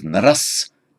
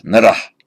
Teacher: But as time went on, that final S became a visarga. So instead of naras, came an expulsion breath, narah.